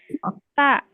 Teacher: huruf ta, ujung lidah menyentuh pangkal gigi seri atas.